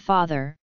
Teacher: the open back unrounded vowel